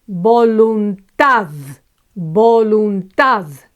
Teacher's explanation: This one ends with a consonant and it's the last syllable that's accentuated. So no tilde here.